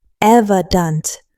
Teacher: 3 syllables. Evident, with stress on the first syllable.